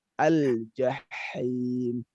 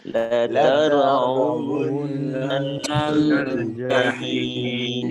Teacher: Ha pada saat dia kasroh ini lebih terasa lagi hamasnya. Jadi dorong lebih kuat.